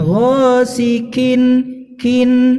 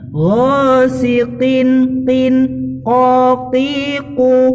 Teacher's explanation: Jangan ghasiqin kin, nah, udah mirip ada desisnya pula, semakin mirip dengan kaf nanti. Jadi jangan sampai ada desis dan juga jangan sampai hilang ketebalannya qaf ya. Jadi harus tetap ada meskipun kasroh.